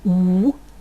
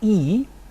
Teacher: parameter the parameter of lip rounding you may have noted that some of the vows I've just produced were produced with rounded lips like ooh others were produce with spread lips like E